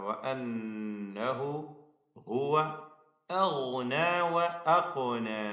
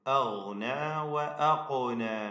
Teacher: ഗൈന് ഖാഫ് ഇവ രണ്ടും തഫ്ഖീം ചെയ്ത് ഉച്ചരിക്കണം. ഗൈന് ഹൽഖിയാണ്, ഖാഫ് ലഹവിയാണ്. ഈ അക്ഷരങ്ങളൊക്കെ വ്യക്തമായി ഇതിന്റെ മഖ്റജിൽ നിന്ന് തന്നെ ഉച്ചരിക്കുക.